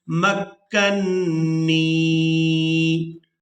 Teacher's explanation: یہاں نون مشدد پر غنہ کریں گے اور نون کو یائے مدہ کے ساتھ ملاتے ہوئے کھینچ کر ادا کریں گے